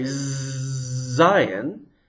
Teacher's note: If you put your hand on your throat when you say shin, sh, you don't feel any vibrations, do you? But when you say zayin, there are lots of vibrations. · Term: voiced consonant